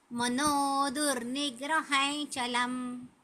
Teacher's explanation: त्याच्या पुढे च आहे ना, म्हणून त्या अनुस्वाराचा उच्चार य सारखा होतो.